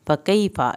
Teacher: फ़कैफ़ा, या साकिन को खींचें, फ़ा की ज़बर को लंबा नहीं करना